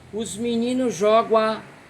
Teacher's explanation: alguns cordelistas comem esse M e fazem uma fusão do Gá com o A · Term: elisão